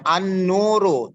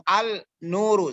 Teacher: Al-syamsiyah, alnya tidak terbaca, tapi yang terbaca adalah huruf yang berikutnya